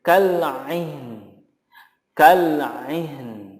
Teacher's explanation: Contoh berikutnya kal aini menjadi kal ain. Nunnya harus muncul walaupun tidak terdengar terlalu jelas gitu atau nampak sekali, tetapi apapun itu makhrajnya harus tetap diberikan.